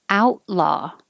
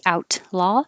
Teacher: the t is in the same place as the l so you don't release it and say out law hold the t and make the l